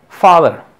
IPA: faðər